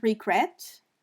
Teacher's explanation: if we say the word regret the second e is stressed